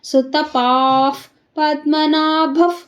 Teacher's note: ಅರ್ಧ ಫರ್ಕೋಬೇಕು ಯಾಕಂದ್ರೆ ವಿಸರ್ಗದ ಮುಂದೆ ಪ ಇದೆ